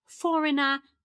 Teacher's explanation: I'm not pronouncing this r at the end because I have this British pronunciation.